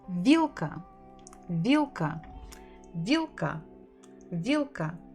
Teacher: Stressed on the first syllable.